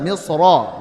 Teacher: beliau melihat kepada asal daripada misro berharakat fathah saat wasal otomatis tebal